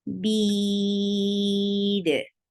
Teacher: Ain from your throat for fatha open your jaws. Bead, 4 counts long because we are giving temporary sukoon on dal because of the waqf. This temporary sukoon created this 2 counts long vowel into 4 counts long. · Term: mad arid sukoon